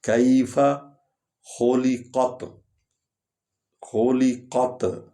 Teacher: تے کو ہلکا پڑھنا ہے، قاف کو پر پڑھنا ہے، حلق سے ادا کرنا ہے قاف کو